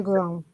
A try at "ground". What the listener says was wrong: Okay, so you see the word ground? There is a D in the end, right? It's almost like this ground, ground. Yeah, it's almost like grounded, but it's ground.